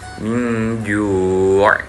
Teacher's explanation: Ketika min ju' itu makhrajnya ada di khayshum. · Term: ikhfa